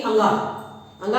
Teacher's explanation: अंगा का क्या है? कंठ प्लस नासिका।